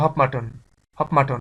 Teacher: যেমন হট মাটন, এটা আমরা আলাদা করে বলতে পারছি, বাট এটা যদি আমরা একসঙ্গে দ্রুত বলতে যাই তাহলে হপ মাটন, হপ মাটন, অর্থাৎ এই টি এবং এম এই দুইটা মিক্স হয়ে হয়ে যাচ্ছে পি